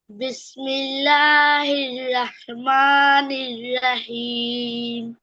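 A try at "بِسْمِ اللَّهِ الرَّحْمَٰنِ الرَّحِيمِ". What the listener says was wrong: হ্যাঁ, একটু বেশি বেশি লম্বা হচ্ছে, বেশি। এই যে বিসমিল্লাহ, এই লামে খাড়া জবর, কয় আলিফ টান? রহিম, কয় আলিফ? রহিম, কয় আলিফ টান এখানে?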